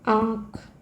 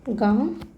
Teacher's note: अनुनासिक ध्वनियों में हवा मुख के साथ साथ नाक से भी निकलती है